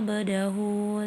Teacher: Mad sila qasirah karena terdapat ha domir berharakat domma terbalik cara membacanya panjang dua harakat